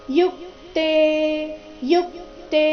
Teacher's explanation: ಯುಕ್ತೆ ಅಲ್ಲಿ ಯು ಮೇಲೆ ಆಘಾತ ಬರಬೇಕು